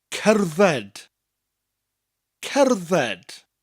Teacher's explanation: So we start with that k sound, cer, with the rolling R, cer. The double D gives us a th sound, and the final D at the end gives us a d